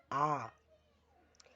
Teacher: विवृत का मतलब मुह पूरा खुला हुआ